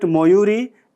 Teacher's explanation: word Moyuri ends at a front unrounded vowel sound